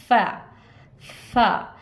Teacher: फा के लिए सामने के दांत नीचे के होंठ के अंदरूनी हिस्से पे लगाइए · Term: फा की आवाज़